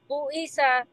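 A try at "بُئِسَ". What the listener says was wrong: सा, सा है कि सा है? सा नहीं है ना? टंग, नहीं, सा की साउंड नहीं आएगी। आपका थोड़ा सा ना सीन से मिलता जुलती आवाज आ रही है, ऐसा लग रहा है आप सीन पढ़ रही हैं।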